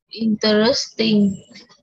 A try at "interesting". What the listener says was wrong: Interesting. Không phải interest nhé. Interesting.